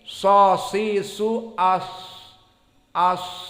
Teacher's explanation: sad adalah tarful lisan, ujung lisan, bertemu dengan as-sanaya as-sufla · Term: makhraj sad